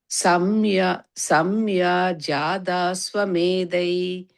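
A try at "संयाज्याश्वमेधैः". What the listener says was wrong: You again using jaya, you're saying it's jya, J-Y-A. Samyajyatashvamedhais. ஆ வரக்கூடாது. Ijwan, yeah, jya. அது வந்து அது remember the word it as samyajya is one word and then ashwamedhais, that's the next word, right? so samyajyatashvamedhais, it goes as one word but it's samyajya ashwamedhais.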